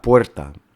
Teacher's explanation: esa O breve tónica resulta en un diptongo en el español y da puerta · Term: diptongo ue